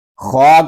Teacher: خا کو ہم ایک الف تک کھینچ کر پڑھیں گے کیونکہ خا کے اوپر کھڑا زبر ہے. خا کو ہم پر پڑھیں گے کیونکہ یہ حروف مستعلیہ میں سے ہے.